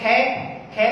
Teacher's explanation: केवल हमें कंठ को बंद करने की आवश्यकता पड़ी और अधिक प्राण वायु भरने की आवश्यकता पड़ी, हमारी स्वर तंत्रिका में कहीं कंपन नहीं हुआ।